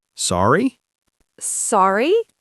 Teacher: you can use the word sorry, but you have to use it with a rising intonation. You say it like a question, "Sorry?" "Sorry?" With that upward pitch is a brilliant trick.